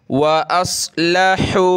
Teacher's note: हमज़ा साद से मिलेगा और साद को हमने मोटा करना है